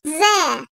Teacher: Dil ucu ile ön dişlerin iç kısmından çıkarılır. Keskin sesli olarak telaffuz edilen bir harf olup ince seslidir.